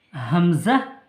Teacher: গলার শুরু হইতে উচ্চারিত হয় বা কণ্ঠনালের শুরু হইতে উচ্চারিত হয় হামজাহ [মিউজিক] হামজাহ ইয়া ইয়া